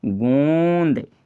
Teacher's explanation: नाक और मुंह यानी नासिका और मुख और नासिका दोनों से उच्चारण हो रहा है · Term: अनुनासिक